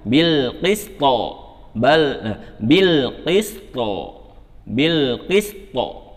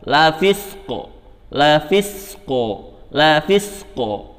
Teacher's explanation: harus dia sambil diangkat tuh pangkal lidah sehingga bunyinya itu tebal, suaranya itu yang muncul itu tebal. Bil qisto, qaf ya, to ya. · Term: pantulannya tebal